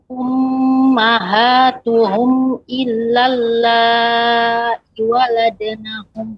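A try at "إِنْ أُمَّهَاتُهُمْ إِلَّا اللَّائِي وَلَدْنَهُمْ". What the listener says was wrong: Nah, kemudian i-nya ada mat juga Ibu. Illallahi waladnahum. In ummahatuhum.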